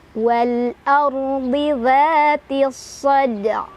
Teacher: Jadi cara bacanya alif lamnya dibaca secara jelas atau diizharkan. Oleh karena itu biasa disebut dengan izhar qamariyah.